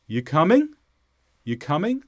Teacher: the tone of my voice went up Rising intonation so the question is signaled by my intonation not necessarily the